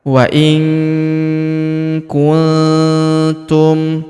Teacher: Huruf nun sukun bertemu huruf tu. Maka huruf nun sukunnya melebur ke huruf tu. Kita baca dengung dan samar. Dengungnya kita tahan dua sampai 3 harakat.